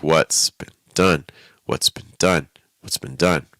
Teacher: When that happens, a little bit of weight on the first word, heavier weight on the last word. The middle word really needs to dip. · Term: 3-word group